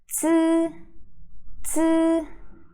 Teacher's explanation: it's kind of like DS sound, the DS ending sound in English, but you have to voice that. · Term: Z sound